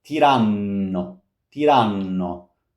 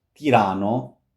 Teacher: Once again, long n. It's a long sound.